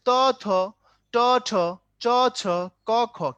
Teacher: প্রথমটায় বাতাস কম, পরেরটাই বেশি